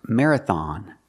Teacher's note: the third syllable has an o and it's pronounced with the sound a like hot and stop